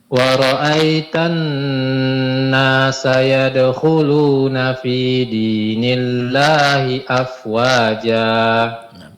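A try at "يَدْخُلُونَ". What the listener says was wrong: Huruf kha lebih tebalkan, Pak.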